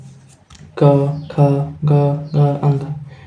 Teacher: कवर्ग है आपका क, ख, ग, घ, अंग, ये आपका कंठ से बोला जाता है